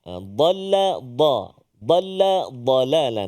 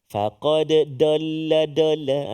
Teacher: Jadi itu dot di hujung lidah tak mau. Dia tepi lidah. Mesti di tepi lidah. Kena gigi geraham. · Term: dad